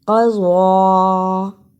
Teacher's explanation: ضاد کے اوپر کھڑی زبر اور چھوٹی مد ہے، اس کو تھوڑا لمبا کرنا ہے